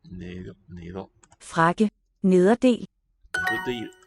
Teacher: So this single D between the vowels is really weakened. We just a gesture toward a D.